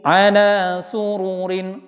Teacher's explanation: Nah, ro-nya enggak panjang yang ro yang pertama.